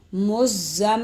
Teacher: زم پر غنہ کر دیں گے، دونوں ہونٹوں کو ملائیں گے